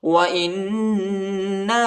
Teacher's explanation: حمزہ کو نون کے ساتھ ملائیں گے، نون پر غنہ کریں گے اور الف پر چھوٹا مد آیا ہے، اس کو تقریباً 2-3 سیکنڈ تک کھینچنا ہے۔